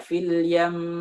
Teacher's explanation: Gunnah yang panjang sudah cukup untuk memberikan isyarat bahwa di sana ada dua huruf. Li'adamil hajati ila nabri fihi, karena kita nggak butuh.